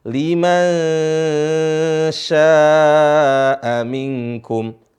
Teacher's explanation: Liman syaa'a minkum an yastaqim. Di sini perhatikan nun bertemu dengan shin. Jadi nunnya disamar. Seharusnya liman sya, tapi disamarin huruf nunnya. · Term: ikhfa